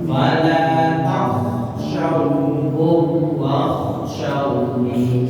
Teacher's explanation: Jadi kho-nya sekalipun sukun, tapi asal mulutnya harus dilipatkan menjadi huruf o kan. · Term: makharijul huruf